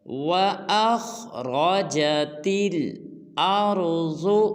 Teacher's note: ارض میں را ضاد کو پر ادا کرنا ہے